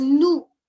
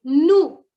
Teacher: So here we are not pronouncing the last S.